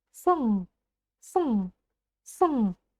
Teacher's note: Это не русская буква «ы», которая произносится долго и широко, да? Это ее укороченная версия, твердая укороченная версия. Можно сказать, что ее в принципе здесь в конце слова нет.